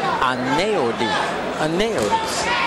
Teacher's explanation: the EU makes an L sound when he says it